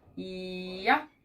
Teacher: Our tongue starts up. Yeah. And our voice is on.